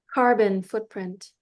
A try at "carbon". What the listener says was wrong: Yeah, you kept saying carbon. It's kind of cute. sounded very French. It was kind of pretty. You're doing that thing where you're missing the ends.